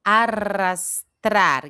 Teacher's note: 2 R juntos que é vibrante também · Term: doble R